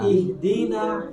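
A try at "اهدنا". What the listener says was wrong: I-nya tarik. Nah, kalau nggak tarik itu ketahuan saya. Tutup mata pun saya bisa tahu tuh yang tarik nggak tarik itu. Oke ya, itu makhraj halak yang pertama yaitu dengan aqsal halqi atau pangkal tenggorokan.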